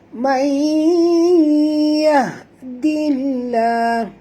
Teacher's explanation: Sorokkan ataupun sembunyikan atau masukkan bunyi nun ini sepenuhnya ke dalam ya. Dengung ya. Idgham ma'al gunah.